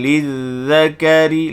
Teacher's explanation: Bila kita sebut huruf zal yang musyaddadah, maka hujung lidah itu masa sebut hujung lidah akan keluar daripada guntingan 2 gigi depan. Lizzakari, ra ni baris bawah, baca nipis.